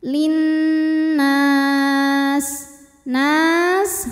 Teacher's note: ghunah musyaddadah atau wajibul gunnah atau Nun musyaddadah karena Nun bertasydid cara bacanya dengung tahan bunyi dengungannya kurang lebih dua harakat